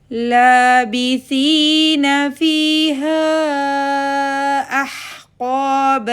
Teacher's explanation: قاف کے اوپر زبر آگے الف آگے الف مد 2 کاؤنٹ · مد منفصل جائز 4 to 5 کاؤنٹس کی